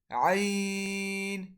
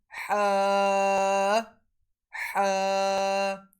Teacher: Ain and Ha are originated from the middle part of our throat.